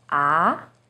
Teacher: starts with a little lower pitch and goes up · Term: second tone